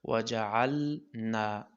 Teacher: وجعلنا لام او نون دواړه قریب المخرج دي، نو دلته په ډیر دقت سره دا ویل پکار دي چې ادغام نشي، داسې نشي. وجعلنا نا دا الف مده دی، د یو الف مقدار راښودل کیږي.